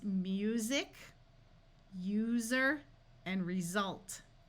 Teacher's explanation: S is often, but not always, voiced between two vowels, like in the words music, user, and result.